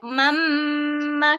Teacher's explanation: Bunyi dia akan dapat mamma. Kita tekan panjang sikit lah dengung dia. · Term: idgham ma'al gunnah